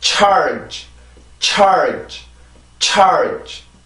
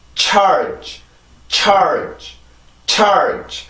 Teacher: 그래서 요게 각각 다른 발음이 아니라 한 세트의 발음이에요. 여기에서 T 발음의 특징도 들어가 있고 슈 발음의 특징도 들어가 있는 폐찰음입니다. 폐세음 마찰음이거든요.